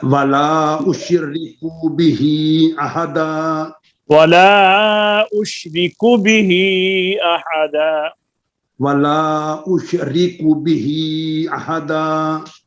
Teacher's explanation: کاف کے پیش کو لمبا نہیں کرنا